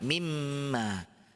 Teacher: lebur langsung tapi masih disertai dengung